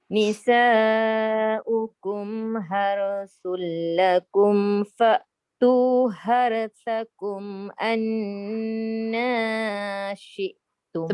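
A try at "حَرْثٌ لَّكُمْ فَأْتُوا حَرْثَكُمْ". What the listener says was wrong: Tebalkan roh tu. Tebalkan roh satu lagi ha tu. Jangan bunyi har. Nanti jadi ha. Haru. Tebal.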